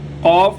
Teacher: موٹا قاف ادا کرنے کے لیے زبان کا جو درمیانی حصہ ہے اس کو اوپر والے تالو کے گلے کی طرف سب سے آخر والا جو حصہ ہے، نرم حصہ، وہاں پر لگائیں گے تو قاف ادا ہوگا۔